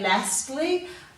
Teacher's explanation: this a is making a broad sound so it's sounding like there's an r in there you have to remember not to put an r in there